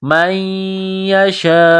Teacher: یہ لمبی مد ہے، 4 الف کے لمٹ میں کھینچنا ہے · نون ساکن کے بعد یا ہے جو مشدد ہے تو نون ساکن پر غنہ کریں گے